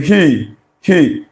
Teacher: But if you place a finger on your vocal cord, you would notice that if at all you're feeling anything like a vibration of the vocal cord, it's very minimal, very small, that we can neglect any vibration there. So there is seemingly no vibration of the vocal cord. Therefore, we classify this sound as voiceless.